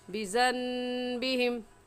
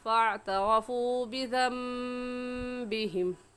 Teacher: نون ساکن آ گیا اس کے بعد با آ جائے تو وہ دونوں میم بن جاتے ہیں اور ان پر غنہ بھی ہوتا ہے